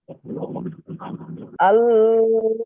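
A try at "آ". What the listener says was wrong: আল নয় নয় নয় নয় নয়, টান দিয়ে ধরতে হবে আল, আল টান দেন। অনেকক্ষণ, 5 সেকেন্ড।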